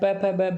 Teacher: हम देखते हैं कि एक होठ दूसरे होठ को स्पर्श कर रहा है, प फ ब भ में। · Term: स्पर्श व्यंजन